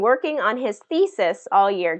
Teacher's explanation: Longer, louder, higher pitch pronunciation on thesis. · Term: first syllable stress